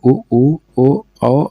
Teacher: ऐसे स्वर है जिनके उच्चारण में होठों का आकार गोल हो जाता है